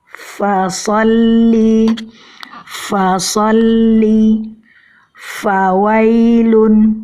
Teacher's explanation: ujung gigi seri atas bertemu dengan perut bibir bawah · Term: huruf Va